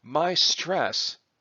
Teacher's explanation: my stress is a phrase that has both syllables stressed